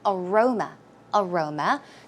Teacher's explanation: as you can see, the stress goes on the second syllable